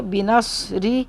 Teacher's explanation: रा को बारीक करेंगे क्योंकि रा के नीचे ज़ेर है, और सौत को मोटा पढ़ेंगे